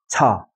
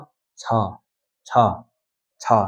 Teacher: यो तल्लो छ चाहिँ तपाईँले भन्दाखेरि अलिकति प्रेसमा निस्किनु पर्यो छ गर्दा तपाईँको हत्केलामा हावा निस्किनु पर्यो